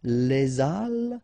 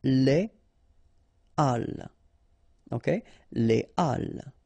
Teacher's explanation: So, but in that case still, even if you've got this H, okay, it belongs to this aspiré group of words, so containing this H, okay, and it means that you won't have the possibility to make the liaison between your article and your word. So in that case, you shouldn't make the liaison, so you shouldn't say les halles, but you should say les halles. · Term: H aspiré